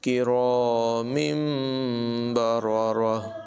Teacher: کے بعد یہاں پر با ہے تو اقلاب ہوگا ہی نہیں، تنوین کے نون کو میم سے بدل کر پڑھیں گے، نون کی آواز نہیں بلکہ میم کی آواز ہوگی